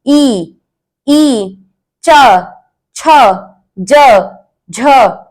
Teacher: तालव्य वर्णः यानी इनको तालु से बोला जाता है।